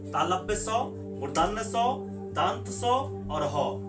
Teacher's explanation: घर्षण होता है तो गर्म वायु के घर्षण से इसका उच्चारण होता है, इसलिए इसे ऊष्म व्यंजन कहते हैं।